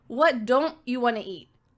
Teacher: with negative contractions, the T, usually if native speakers are talking quickly, it's gone. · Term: final T sound